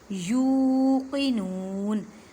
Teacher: वबिल आखिरती हुम यूक़िनून, मीम साकिन के बाद या आ गई, इज़हार शफ़ी का कायदा करें। यू को एक अलिफ की मिक़दार में खींचें और नून को भी एक अलिफ की मिक़दार में खींचें